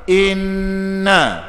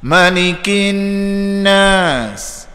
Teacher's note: Jadi inna dua harakat dengung.